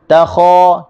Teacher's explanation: Okey, takhafuna, kalimah takhafun huruf kha. Huruf kha huruf yang keluar daripada halqum atas. Takha, kita just buka mulut.